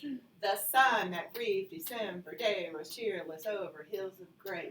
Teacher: the rhythm is an unstressed syllable followed by a stressed syllable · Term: iamb